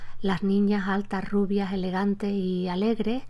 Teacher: Cuando esa «s» desaparece, en realidad, la vocal anterior se abre un poco o se alarga un poco · en la mayor parte de los casos lo que vas a escuchar es una aspiración de esa S. Por lo tanto, la S, marca del plural, no siempre se pronuncia como tal.